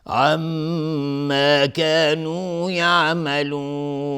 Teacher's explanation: میم تشدید دار، 2 حرکت غنه میدیم